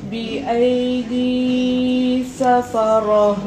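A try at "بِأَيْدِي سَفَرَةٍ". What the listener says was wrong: Tangan tu macam panjang lebih lah kak.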